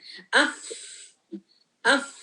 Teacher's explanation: फा में भी रनिंग ऑफ द ब्रेथ है